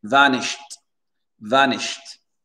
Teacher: l'accent tonique, il est sur le VA et pas vanished ou shed.